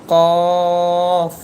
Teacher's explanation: আপনার জিহববার গোড়া উপরের তালুর সাথে লাগিয়ে এই কফরটি উচ্চারণ করবেন। একটু মোটা হবে কফরটি।